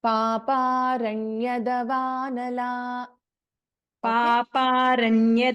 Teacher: there is no Dirgha Swara after Ya